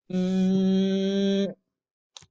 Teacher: Cuando se tapan la nariz, el sonido se acaba, porque era el único lugar por donde podía salir el aire, ¿sí? Entonces, el sonido es un sonido nasal, lo mismo que el sonido el de nene, el de nasal.